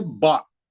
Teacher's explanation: बा का आवाज ऊपर जाता है और उसकी मकदार 1 हरकत है। उसकी मकदार 1 हरकत का मतलब सिर्फ 1 बार उंगलियां खोल के बंद करना, ज्यादा नहीं, ज्यादा लंबा नहीं करना। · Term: जबर